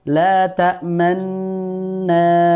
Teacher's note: Ismam yaitu kita mengisyaratkan harokat dhammah pada bacaan ini. Jadi nunya itu kita nggak ucapkan, tapi cukup mengisyaratkan dengan monyongnya bibir kita.